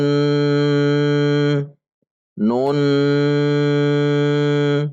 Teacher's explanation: huruf nun karena disini huruf nun maka dibaca ghunnah perhatikan Nun Nun dibaca dengung dua harokat